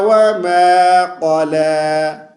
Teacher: اور قاف کو موٹی آواز سے پڑھیں گے، اس کو باریک آواز سے پڑھیں گے تو یہ کاف بن جائے گا